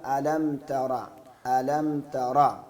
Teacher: ألم ہم پہ غنہ نہیں ہوگا